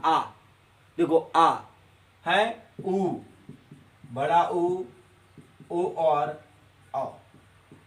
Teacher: जब मुखार बिंदु का पिछला हिस्सा खुले उसे हम पश्च स्वर कहते हैं।